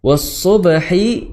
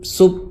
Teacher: Kemudian was-subhi ya, bukan tapi ya, suara desiran ya, suara desiran ya dari gigi bawah itu disertai dengan ketebalan, bukan sub ya, itu sin ya, sin. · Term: shad